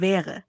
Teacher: Der richtige Klang ist ein weicher, leicht offener Vokal, bei dem die Lippen entspannt bleiben, anstatt sie zu sehr zu dehnen oder zu verengen.